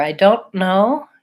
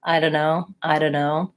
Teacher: I do mark that T and make a stop, versus I don't know, is kind of more like I know.